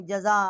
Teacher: آگے حمزہ ہے، بڑی مد ہے، 4 الف جتنا آواز بلند کی ہے